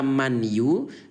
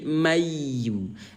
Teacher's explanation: Dan suara ya yang bertasdid inilah yang dibaca tahan selama 2 ketukan. Ya, maka wajib terlapaskan mayu gitu. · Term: idgham bi gunnah